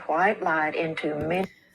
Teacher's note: As you can hear the way she says light, she adds an H sound and drops the second sound in the diphthong.